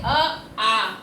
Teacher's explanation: अ, आ का उच्चारण स्थान कंठ से होता है।